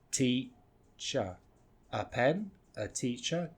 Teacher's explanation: We take out the E and we replace it with that schwa sound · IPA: ə